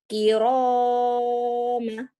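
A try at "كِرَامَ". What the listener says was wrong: Jangan kelamaan itu. Kiroma, jangan. Kiroma, dua ketukan. Satu alif.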